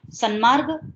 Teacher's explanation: મ ના અનુનાસિકત્વથી અસર પામીને ત નકારમાં પરિવર્તન પામે છે અને માટે ત્યાં આગળ સન્માર્ગ એવો શબ્દ બને છે.